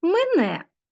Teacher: Так ви написали транскрипцію цього слова продовжуємо перевіряти далі мене е перший звук ненаголошений голосний і наближається до и